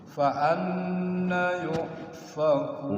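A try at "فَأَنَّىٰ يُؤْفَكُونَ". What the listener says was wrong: nanya panjang faanna faanna yfaquun satu lagi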